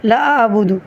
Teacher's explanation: عین کے اوپر ساکن ہے، تو یہاں پہ آپ نے واضح عین کا ادا کرنا ہے